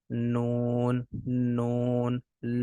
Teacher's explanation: जबान का किनारा जब ऊपर के तीन दांतों के मसूड़ों से लगे तो नून अदा होता है · زبان کا کنارہ جب اوپر کے 3 دانتوں کے مسوڑوں سے لگے تو نون ادا ہوتا ہے